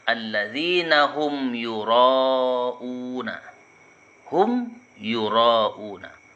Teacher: Humnya dibaca jelas karena dia bertemu dengan huruf ya. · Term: izhar syafawi